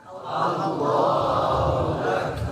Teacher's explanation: Jadi a bukan O ya. A jadi yang tafhim lamnya. A-nya tetap biasa.